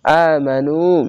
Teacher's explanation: পেশের পরে ওয়াও সাকিন এক আলিফ টেনে পড়বেন